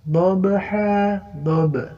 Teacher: qalqalah huruf ba mati ya